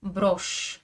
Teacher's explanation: J'écris bien un signe mou mais il n'a aucun effet sur le ch qui reste dur.